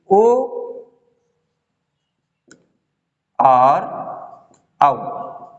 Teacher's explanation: ओ और औ का क्या स्थान है, कंठोष्ठ है, कंठ तथा ओष्ठ, कंठ एवं ओष्ठ, ठीक है, कंठ एवं ओष्ठ, इनका कंठ और ओष्ठ स्थान है, किसका, ओ और औ का, अर्थात ओकार जिसको बोलेंगे इसको औकार बोलेंगे, तो ओकार औकार का कंठोष्ठ स्थान है, कंठ और ओष्ठ, कंठ और ओष्ठ।